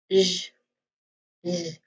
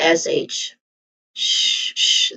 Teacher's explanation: It's the voiced equivalent of sh sound. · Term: voiced sound